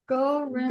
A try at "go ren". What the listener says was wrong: Don't say in English G because it's not. It's not a K. a G. It doesn't exist in English.